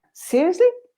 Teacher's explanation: some people like to say seriously seriously with rising intonation